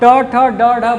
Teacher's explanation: जब आप ट ठ ड ढ बोलेंगे तो आपकी जीभ जो है वो मुड़कर पहले मूर्धन्य को छुएगी। ठीक है, ये ऊपर का भाग मूर्धन्य कहलाता है, तो ये जीभ उठ के पहले ऐसे छुएगी इसको और वापस तालु पे झटके से बंद हो जाएगी। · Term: उच्छिप्त व्यंजन